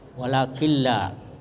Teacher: jadi dimasukkan idgham bila gunnah tanpa dengung. Nah, jadi nunnya ini dimasukkan ke la, walakilla.